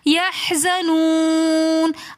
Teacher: واو مدہ کے بعد نون ساکن ہونے کی وجہ سے ہم نے اس کو ایک تھوڑا سا کھینچ کر پڑھا